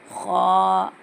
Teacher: ख हैवी है, इसको गोल मुँह करके बोलना